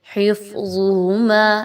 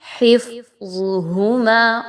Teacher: ظا جو ہے وہ موٹا حرف ہے، اس کی وجہ سے فا موٹی نہیں ہونی چاہیے. حفظہما ایسا نہیں پڑھنا، بلکہ آپ نے فا کو باریک، حفظہما، اور ظا اور ہا موٹی پڑھی جائیں گی.